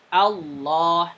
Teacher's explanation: Pertama, ketika Allah atau ketika membaca, mulai dari lafad Allah sendiri. Maka Allahnya dibaca tebal. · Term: dibaca tafkhim